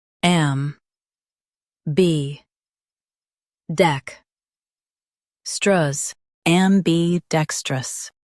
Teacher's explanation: Stress dec and keep am light.